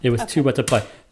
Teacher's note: The stress is on the two, yes? Yes, on the two with a double with a double O.